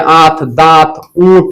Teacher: दीर्घ स्वर के उच्चारण में अनुनासिक भी दीर्घ उच्चारित होता है।